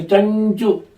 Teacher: ಚಕಾರದ ಮೇಲೆ ಅನುಸ್ವಾರ ಬಂದಾಗ ನ್ಯೂ ಬರಬೇಕು